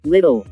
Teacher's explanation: the two allophones of l in little were actually produced slightly differently and the second one sounds slightly deeper these different l s always occur in different environments in words